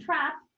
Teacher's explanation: this occurs in a low front position